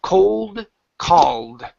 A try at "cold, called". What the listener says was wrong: So it's hard, right? So it's because you need to open your mouth just